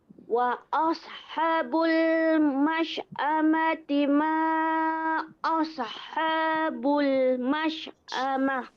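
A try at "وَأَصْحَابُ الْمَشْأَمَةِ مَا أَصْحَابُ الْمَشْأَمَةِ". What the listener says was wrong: Boleh kemaskan sedikit lagi dekat kalimah asha yang pertama ni. Panjangkan 2 harakat.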